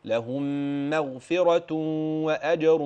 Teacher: الميم في قوله قوله قوله لهم يعني الميم ترقق لهم مغفره يعني الميم ترقق والغين بعد كده تفخم ثم الفاء ترقق